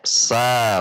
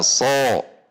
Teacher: ujung lidah seperti Sin Sin kecil kemudian pangkal lidah ditegangkan jika Sin berbunyi sa jika shod berbunyi so